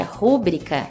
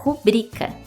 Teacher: essa palavra não é uma proparoxítona e sim uma paroxítona Portanto o correto é pronunciar rubrica cujo significado é assinatura abreviada